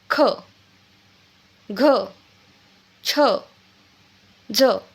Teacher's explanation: जेव्हा आपण खचा उच्चार करतो मागून काय येतो? ह लागतो. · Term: महाप्राण व्यंजन